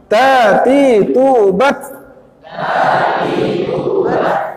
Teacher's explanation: Ta ini yang paling sedikit, yang paling lemah sifat hamasnya. Tapi dia bagian dari hamas, ya.